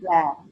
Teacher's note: laugh with a long ah